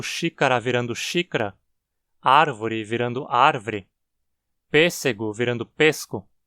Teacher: A eliminação de vogais átonas curtas, especialmente após uma sílaba tônica, é um processo chamado síncope.